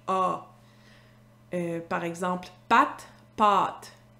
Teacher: C'est ce qu'on appelle en linguistique le A postérieur labialisé. En fait, au Québec, vous devez savoir qu'on a gardé la distinction entre le A antérieur à l'avant de la bouche, A, et le A postérieur dans le fond de la bouche